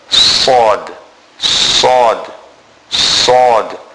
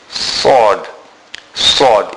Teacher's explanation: the tip of the tongue touches the edge of the two lower front teeth, including the two upper front teeth. So the two big teeth at the bottom and the two big teeth at the top. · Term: The letter Sod